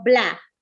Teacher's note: practicar ustedes mismos va la palabra balada la balada al habla se va minimizando el sonido a un solo golpe de voz ya no va a decir balas sino bla retiramos la vocal